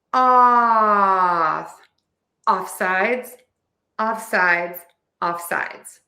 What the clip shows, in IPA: ˌɔfˈsaɪdz